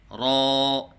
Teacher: ایک الف کے برابر لمبا کر کے پڑھیں، جیسے را، نہ ایک الف سے کم ہو جیسے را، اور نہ ایک الف سے زیادہ ہو جیسے را۔